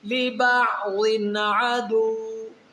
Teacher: دو زیر کی تنوین کے آگے حروف حلقی میں عین ہے، تو یہاں پر ہم غنہ نہیں کریں گے بلکہ اظہار کریں گے